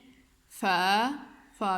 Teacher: فا بھی آپ اوپر والے دان جب نیچے والے ہونٹ سے لگتے ہیں تو فا ادا ہوتا ہے